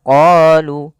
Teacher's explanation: kita memanjangkan huruf qa sepanjang 2 harakat karena pada lafal qa ini ada bacaan mad tabi'i